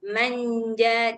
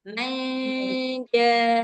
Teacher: Jangan lupa didengungkan. Dengungnya harus cukup ee dua harakat.